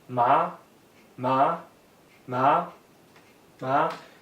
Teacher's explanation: Second tone, rising, ma, ma, ma, ma, means hemp.